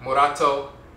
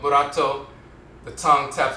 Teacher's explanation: the rolling are just one tap morato instead of murato murato the tongue Taps the roof of the mouth once